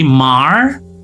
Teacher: Kemudian kalau di American ini ada ya. Ada R-nya, jadi mar.